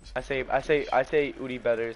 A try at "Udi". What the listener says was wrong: It's Udi. You say ooh. You're saying ooh. It's Udi. And with like a light ass voice. Udi. Udi isn't said. Udi.